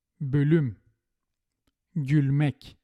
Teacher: In the words with Turkish origin with front vowels, we use the light L.